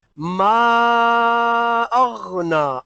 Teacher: یہ غین ہے، عین کی آواز نہیں نکلنی چاہیے. ٹھیک ہے، ما اغنا، اغ غین ہے.